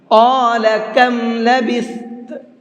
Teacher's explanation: قال کے قاف کو منہ بھر کے پڑھیں گے، اور کم کے کاف کو باریک کر کے پڑھیں گے۔ یہ اس لیے بتا رہا ہوں کیونکہ پہلے بڑا قاف ہے پھر چھوٹا کاف ہے، دونوں لفظوں کو پڑھنے میں دشواری ہوتی ہے، تھوڑا سا پریکٹس کریں گے تو انشاءاللہ آسانی کے ساتھ میں آپ سے پڑھا جائے گا۔